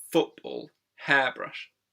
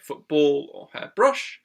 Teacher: in compound nouns such as hair, brush, or football, there's a slightly stronger stress on the first syllable there.